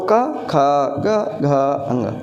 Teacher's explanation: पहला वर्ण आहिस्ते से, दूसरा वर्ण थोड़ा खींच करके, प्राणवायु तभी तो ज़्यादा निकलेगी।